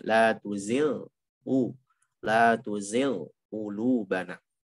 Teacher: Walaupun ghain sama qaf tinjauannya sebenarnya dekat ya. Ghain kan di ujung tenggorokan, qaf itu di pangkal lisan.